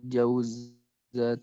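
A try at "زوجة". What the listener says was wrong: Zaujatu ya. Bukan jauz. Tapi zauj. Zaujatu. Jadi za-nya dulu. Zaujatu.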